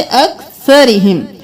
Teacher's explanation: रौ बारीक पढ़ेंगे क्योंकि इसके नीचे जेर है।